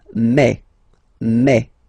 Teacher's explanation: you get the sound E, E. So really open E, okay? And then you pronounce it me, me.